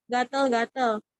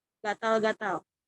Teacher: Bunyi yang digunakan penutur adalah bunyi vokal E, seharusnya bunyi vokal A. Setelah diperbaiki, kata gatel-gatel menjadi kata gatal-gatal.